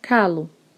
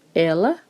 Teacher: a substituição do erre forte português pela língua dental l ou seu abrandamento em r fraco vejamos os exemplos rapaz fica lá passe carro fica calo esse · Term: rotacismo